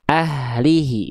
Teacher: Nafasnya biasa, dilafalkan bukan dari dada, tapi dari bagian pangkal tenggorokan. Ya. Nafasnya mengalir, suaranya mengalir. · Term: H besar